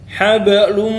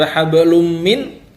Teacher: tanwin pada hablun bertemu dengan huruf mim ya dia menjadi Idgham Bighunnah idgham yang dengan dengung hal Belum ya bukan sekedar hablum Min tapi lumnya itu ditahan